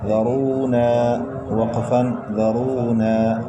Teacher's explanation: ساکن حرف ایک مرتبہ اپنے سے پہلے اور ظاہر طرف سے مل کر پڑھا جاتا ہے. واو ساکن سے پہلے پیش واو مدہ ہوگی. حروف مدہ کو ایک الف کو برابر کھینچ کر پڑھتے ہیں. را کے اوپر پیش ہے، را کو موٹا پڑھیں گے.